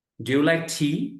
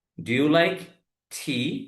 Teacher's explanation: ইংরেজিতে যখন কোয়েশ্চেন হয় ইয়েস নো কোয়েশ্চেন, তখন টোনটা লাস্টে এসে হাই হয়ে যায়, এই টোনটা লাস্টে এসে হাই হবে।